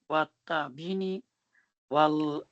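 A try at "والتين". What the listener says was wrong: There is no ba in the first word. Wattini. No, wattini.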